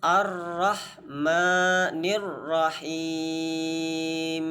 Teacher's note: Him itu harus sempurna kasrohnya dan sama dipanjangkan 2 harokat pada mad arid lis sukun